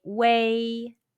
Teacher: Your lips are from round to spread.